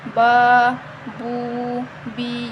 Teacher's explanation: با، بو، بی، ہم اس کو جھٹکا نہیں دیں گے، اور ٹھیک ہے اور اس کو ہم ایک الف کے برابر، ان تینوں کو ہم ایک ایک الف کے برابر لمبا کر کے پڑھیں گے، ٹھیک ہے، با، بو، بی، ٹھیک ہے، اس طرح پڑھیں گے۔ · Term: حروف مدہ